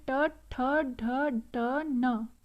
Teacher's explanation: मूर्धन्य हम बोलेंगे दांतों के पीछे जो खुदरा पार्ट है ना, ऊपर जो दांतों के पीछे खुदरा पार्ट है, उसकी हेल्प से हम बोलेंगे टवर्ग को